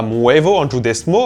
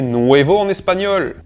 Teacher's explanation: par exemple nue- /nwe/ devient mue- /mwe/. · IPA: /ˈmwe.vo/